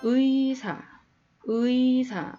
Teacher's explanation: 이 이중모음이 그 단어의 첫 음절에 왔을 때는 의 그 소리값이 그대로 납니다